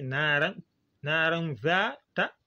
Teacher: Donc, on ne doit pas très bien ressortir le ran. On dit naran zata. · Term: ikhfa